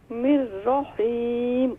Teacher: निर्रहीम, रा को full mouth करें।